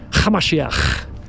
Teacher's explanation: You have to add a little bit of a throaty little ch.